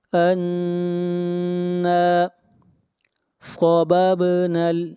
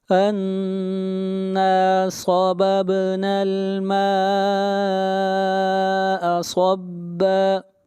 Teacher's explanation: صاد کو موٹا پڑھیں گے، صاد حروف استعلاء میں سے ہے، با کے اوپر قلقلہ ہوگا